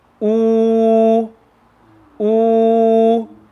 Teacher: So when we read this, we're going to say ooh. Ooh, and the makhraj for the waw sakin is the emptiness of the mouth.